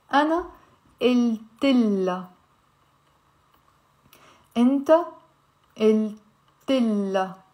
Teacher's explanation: it's common to drop the pronunciation of the ha when it comes to pronouns in the Lebanese dialect.